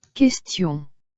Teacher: Now look, the here this word is pronounced as kest, kest, and I you already know is pronounced as e, and on is a nasal sound which is pronounced as o